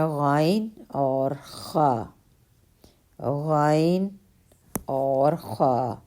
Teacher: اور 2 حرف ہیں غائن اور خا، غائن اور خا، حلق کے اوپر والے حصے سے ادا ہوتے ہیں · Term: حروف حلقیہ